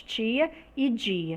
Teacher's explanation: completa dos articuladores tá é tanto por uma fricção então é como se fosse a combinação de uma oclusão e uma fricção